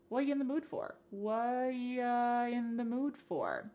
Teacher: The word are is gone, and the word you has been reduced to ya. So when we link together what and you, it's super fast.